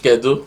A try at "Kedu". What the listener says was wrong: So you don't stretch it so much. It's not one of those ones you stretch. It's not like in day where you just say kedu.